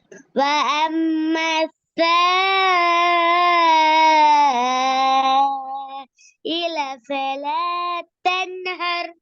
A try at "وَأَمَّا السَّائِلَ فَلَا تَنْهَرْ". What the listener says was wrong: இப்படப்படாது. وأما السائل فلا تنهر. ஒரேடியா ஓதி கொண்டு போகணும்.